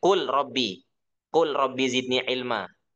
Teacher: Lam dengan ro juga berdekatan makhrajnya. · Jadi kita lamnya hilang. Kenapa? Karena lamnya dimasukkan ke robbi. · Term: mutaqaribain